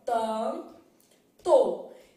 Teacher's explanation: Na palavra tanto, o N não é pronunciado.